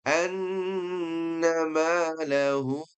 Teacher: Di sini kita baca dengan bacaan yang maksimal saja, yaitu enam harakat. · ini ada nun yang bertasydid itu dengan tempo dengung yang dipanjangkan